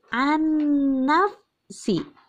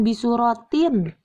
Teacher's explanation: Nun ini tidak dibaca yang dibacanya langsung masuk ke huruf sesudahnya ya hingga leburlah huruf nun mati sehingga leburlah huruf nun mati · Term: idgham